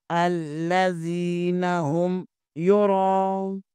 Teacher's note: الف کے برابر کھینچیں گے، الذی نون زبرنا، الذین ہم، یرا را زبر کے آگے الف مدہ ہے، اور الف کے اوپر مد ہے، مد متصل، اسے بھی کھینچیں گے، 2 ڈائی یا 3 الف کے برابر